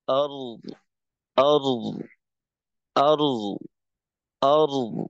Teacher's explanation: আর এখানে যেন আমার আওয়াজ শেষ না হয়। রয়ের আওয়াজ চালু থাকতে থাকতে দদের মাখরাজে গিয়ে দদের একটু আওয়াজ চালু করা।